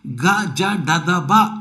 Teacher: ಕಿವಿಯನ್ನು ಮುಚ್ಚಿಕೊಂಡು ನಿಧಾನವಾಗಿ ನಾವು ಉಚ್ಚರಿಸಿದಾಗ ಒಂದು ಜುಮ್ ಜುಮ್ ಎನ್ನುವಂತಹ ಒಂದು ಅನುಭವ ನಮಗೆ ಆಗುತ್ತದೆ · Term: ಘೋಷ ವ್ಯಂಜನಗಳು